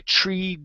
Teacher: can pronounce it with a normal T sound that's all right personally I say it with what's called a flap T